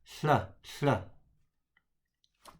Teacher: the tongue blocks the middle of your mouth, so the air has to pass around the side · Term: Welsh double L